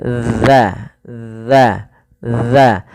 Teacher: ujung lidah kita tempelkan daripada dua gigi kita